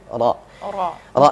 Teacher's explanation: takrir itu getarnya berulang-ulang